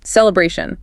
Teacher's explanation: Third syllable. Celebration. Feel that A sound lengthen a bit.